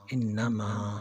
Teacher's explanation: جس طرح کہ میں نے بتایا کہ نون پر اور میم پر جب شد آ جائے تو اسے نون مشدد یا میم مشدد کہا جاتا ہے. انما ادھر نون کے اوپر شد ہے، یہاں پہ غنہ کیا جائے گا